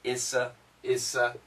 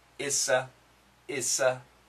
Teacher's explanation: The S cancels the T.